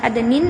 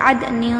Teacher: دیکھیں، عدن تجری، یہاں پہ دیکھیں نون ساکن کے بعد تا ہے، یہاں پر پڑھیں گے عدن، اخفاء نون کی آواز عدنین نہیں کہنا بلکہ عدن، اور غنہ بھی کرنا ہے، یعنی نون کی آواز ہماری ناک میں گھومے گی